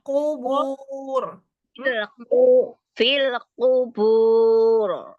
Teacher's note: Domah itu mencucu dengan sempurna.